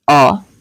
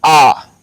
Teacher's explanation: अ में कम समय लग रहा है और आ में अधिक समय लग रहा है